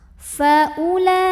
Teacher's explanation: Hati-hati, u-nya bukan mad badal, waw-nya bukan pemanjang, jadi u pendek aja. Faula. Ada mad wajib muttasil karena ada mad tabi'i ketemu hamzah dalam satu kata yang sama.